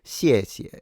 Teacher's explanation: the X is a sound in between the S and the sh